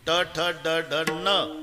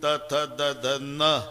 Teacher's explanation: ट ठ ड ढ न दाताशी संबंध नाही त थ द धन दाताशिवाय उच्चार नाही